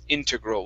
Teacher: I've heard people say integral and integral. I believe the correct pronunciation of the word is integral with the stress at the very beginning